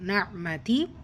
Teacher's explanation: நூன் முஷத்தா இருக்குது, குன்னா செய்யணும்